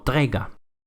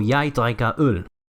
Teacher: la K se suaviza a una G y entonces se pronuncia como trega.